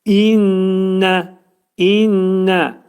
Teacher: İnnə mə'al gunnədir. İdğamı mə'al gunnə. Burunda sıxılır.